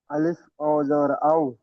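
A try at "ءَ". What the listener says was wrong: হামজা, আলিফ না হামজা।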